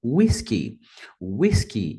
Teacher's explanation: a primeira sílaba é a mais forte, a pronúncia deve ser whisky